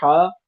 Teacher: ह में मोटी नहीं होगी आवाज ह नहीं मुंह गोल नहीं होगा हवा निकलेगी तेजी के साथ बाहर की तरफ और बीच हलक से ह अदा होगी